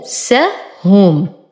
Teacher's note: نون ساكنة وبعدها الفاء، أحقق آلية الإخفاء وأوضح الفاء، أنفسهم، وتم ضمة الهاء وأصبر على الميم وأعطيها زمن التوسط.